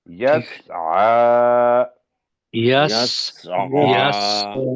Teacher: عین جو ہے یہ حروف حلقی ہے تو حلق سے نکالنا ہے اور 2 حرکت کے برابر لمبا کرنا ہے۔